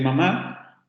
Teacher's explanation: se cierra la salida del aire por la cavidad oral y se abre la cavidad nasal para que el aire vaya hacia esa zona entonces el canal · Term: fonemas nasales